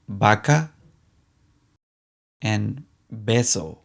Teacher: Our next letter is B corta. In Latin America, both the V and the B sound like the B in baby.